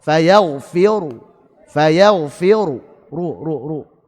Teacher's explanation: Ingat ya, raum hukumnya sebagaimana saat wasal. Ru dhammah saat wasal dibaca tebal.